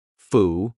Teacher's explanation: What happens to that final D? We just cut it off.